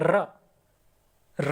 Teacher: इसमें आपको बोलते समय आपकी जीभ है ना वो पूरी हिल जाती है, लुंठित हो जाती है पूरी। र बोल के देखिए, र र बोल के देखिए, पूरी जीभ आपकी हिल जाएगी, लुंठित वर्ण इसीलिए बोलते हैं इसे, ठीक है।